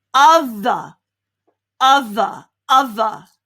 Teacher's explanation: So it's not the normal TH, it's the vibration TH.